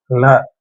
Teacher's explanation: நாக்கோட நுனிப்பகுதி மேல் பல்வரிசையோட அடியில டச் ஆகும் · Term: தந்திய